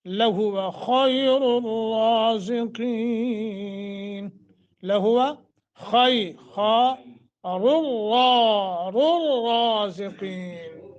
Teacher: دونوں را کو موٹا قاف کو موٹا